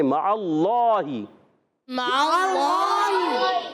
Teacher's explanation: اللہ پاک کے لام سے پہلے زبر آ گیا، اللہ پاک کا لام موٹا پڑھیں گے